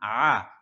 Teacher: আ কণ্ঠনালীর মধ্যখান থেকে হা এবং আইন একই জায়গায় থেকে উচ্চারণ হয় এটার মাখরাজ একই জায়গায় আলাসারিহিম আলা আকসারিহিম ফাহুম লা ইউমিনুন ফাহুম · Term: আইনের উচ্চারণ